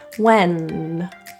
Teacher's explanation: feel that the tongue tip is touching your roof for and feel the air come out your nose